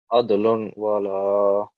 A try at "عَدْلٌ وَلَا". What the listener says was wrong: نہیں واو پہ آواز آئے گی, لن نہیں ہوگا. عدل ولا